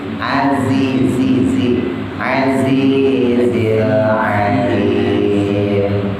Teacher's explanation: Zai sama kayak sin, ujung lidahnya taruh bawah antara gusi bawah sama gigi bawah ya, antara gusi sama gigi.